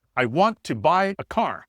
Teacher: we've got three words, want, buy, car, that need to be stressed